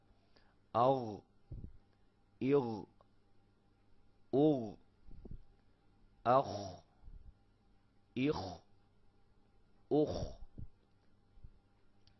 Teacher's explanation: یہ آپ کے منہ کے قریب والے حلق کے حصے سے ادا ہوتے ہیں